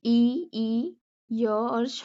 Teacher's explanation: इसका उच्चारण स्थान कहाँ से है, तालु से